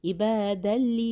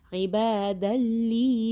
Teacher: لام آ رہا ہے دو تنوین کے بعد، دو زبر کے بعد، تو ادغام بغیر غنہ کے ہوگا